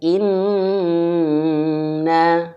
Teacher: kalau nun bertasydid, dua harakatnya ini jangan sampai disamakan dengan mad thabi'i. Dua harakatnya harus lebih lama. Makanya banyak para ulama yang mengatakan bahwa nun bertasydid, mim bertasydid, ataupun idgham bighunah, kadarnya, gunahnya masuk kepada gunah akmal.